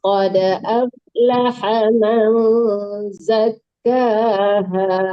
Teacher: Qad ada qalqalah dalnya